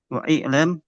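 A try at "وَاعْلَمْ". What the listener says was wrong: wa'lam wa'lam dibaca itu bukan alif itu hamzatul wasli namanya wa'lam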